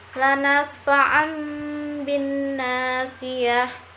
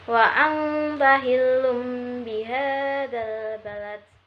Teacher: suara nun mati diganti mim mati · bibir atas dan bibir bawah tersebut posisinya tertutup dan juga diiringi dengan suara dengung kurang lebih dua harokat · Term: hukum iqlab, iqlab